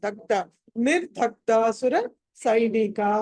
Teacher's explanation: ద తర్వాత గ కి అదే అల్పప్రాణం లైట్ గా పలకాలి